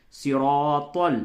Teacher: تو یہ صاد را اور طا یہ تینوں پڑ ہیں، تینوں پڑ حروف ہیں، موٹے کر کے اس کو پڑھتے ہیں